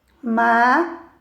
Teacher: Então, verifica que o E é a sílaba mais forte, né, da palavra